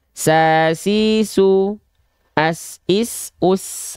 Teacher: Huruf sin ketika dilafalkan dia mengalir nafas. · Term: hams